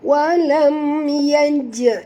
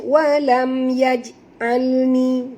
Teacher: huruf jim apabila dia mati dekat sini tengah-tengah kalimah, kita kena kena qalqalahkan dia, namanya qalqalah sughra